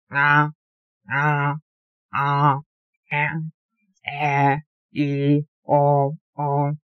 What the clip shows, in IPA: ŋa ŋa ŋe ŋe ŋi ŋo ŋo